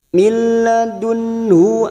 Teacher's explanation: nun sukun bertemu ha idhar halki nun sukun dibaca jelas